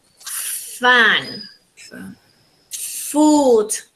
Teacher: Labiodental because we use lower lip and upper teeth.